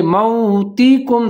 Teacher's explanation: واو ساکن ہے، واو لین ہے، تو یہاں پر ہم ہونٹ گول کر کے پڑھیں گے، موتکم، تا کے نیچے زیر ہے، کاف پیش میم کم۔